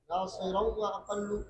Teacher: یہاں پر ادغام تام ہے، نون تنوین کے بعد واو آیا ہے، نون تنوین کے بعد یا نون ساکن کے بعد واو اور یا آنے کی صورت میں خلف اس میں ادغام تام کرتے ہیں، جس طرح لام اور را میں ادغام تام کرتے ہیں، اسی طرح واو اور یا میں بھی ادغام تام کرتے ہیں۔